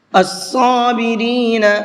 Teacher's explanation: صاد کو پر کر کے پڑھیں گے